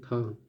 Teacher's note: हिंदी की स्पर्श अघोष महाप्राण दंत्य व्यंजन ध्वनि है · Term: दंत व्यंजन ध्वनि